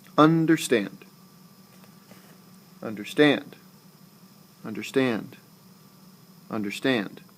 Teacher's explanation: anapestic is unstressed unstressed stressed